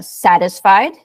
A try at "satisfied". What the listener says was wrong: Oops, I didn't hear the D. Satisfied.